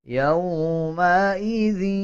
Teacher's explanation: یومئذ، جب دال کو یا کے ساتھ ملائیں گے تو غنہ کریں گے اور غننے کی آواز کو ناک سے نکالا جائے گا